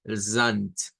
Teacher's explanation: se cambia el sonido de la D por una T